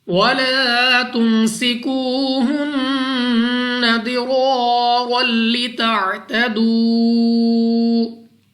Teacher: نون مشدد غنہ کر کے پڑھیں گے، ناک میں سے ادا کرنا ہے۔